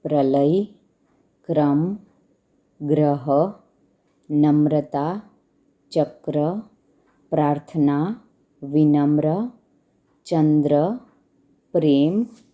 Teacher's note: पदेन अक्षर के नीचे लगाया जाता है और इसमें अक्षर आधा और र का उच्चारण पूरा किया जाता है